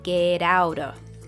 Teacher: between two vowel sounds, like in get out of, it often changes into a soft D sound. This is called a flap T, it's super common in American English.